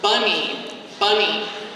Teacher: But if we look at the word bunny, like a rabbit, bunny, the first syllable is stressed. So that receives a symbol that is a full vowel symbol.